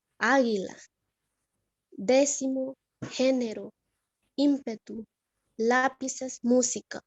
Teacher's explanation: Esta lleva la mayor fuerza de voz en la tercera sílaba, contando de derecha a izquierda. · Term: esdrújulas